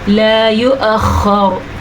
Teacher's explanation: اچھا جناب, یہ را پر پڑھی جائے گی کیونکہ را ساکن کر دی ہم نے وقف کی وجہ سے. را ساکن سے پہلے زبر آ گئی تو را پر ہو گئی. اگر ہم وقف نہ بھی ہوتا یہاں پہ, خیر یہاں پہ تو وقف لازم ہے, تو بھی را پر ہوتی کیونکہ اس کے اوپر پیش ہے.